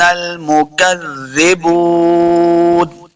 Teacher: واو مد ہے، اس کو دو حرکات لمع کرنا ہے